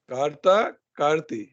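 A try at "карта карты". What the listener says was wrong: कार्ता कार्तुई। कार्ती ई नहीं है ना, उई है, उई। आपको ई और ई में कोई फर्क ही नहीं है। कार्ता कार्तुई।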